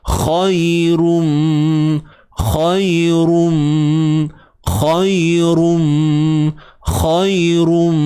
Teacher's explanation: kha tebal, matikan ya dengan mewujudkan sifat lunak. Khairum, khairum, khairum, khairum, ra baris depan tanwin.